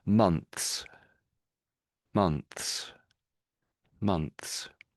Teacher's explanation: the TH dies a little bit in sort of volume · I think the TH gets slightly truncated.